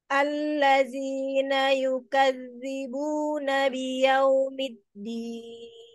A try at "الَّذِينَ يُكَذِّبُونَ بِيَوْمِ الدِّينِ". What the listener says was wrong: Iya, hati-hati zalnya ya, kayak zai, Zi, alladhi. hati-hati ya, hati-hati zai, insya Allah.